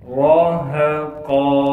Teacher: قاف کو موٹا کر کے پڑھیں گے اور قاف کو ایک الف کی مقدار کھینچیں گے وقف کی حالت میں